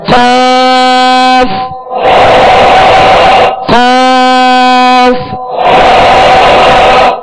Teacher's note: زبان کی جڑ اور تالو کے نرم حصے سے 2 نقطے والا قاف جو پر پڑھا جاتا ہے وہ ادا ہوتا ہے